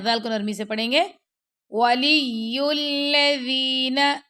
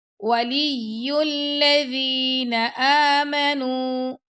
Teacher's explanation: ذال جب ہم نرمی سے ادا کرتے ہیں تو ہماری جو زبان کی نوک ہے وہ دانتوں کے کناروں سے لگتی ہے